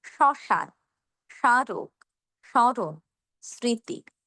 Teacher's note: ম উজ্জ থাকবে। কিন্তু ম ফলের ক্ষেত্রে আমরা খানিকটা আনুনাসিক বা নাকি স্বরে বলব। যেটা আমরা বফলের ক্ষেত্রে বলিনি।